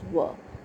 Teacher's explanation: a v buzzing sound comes when you continuously utter the sound in continuous motion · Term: v consonant